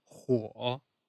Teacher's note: falling rising tone means fire in English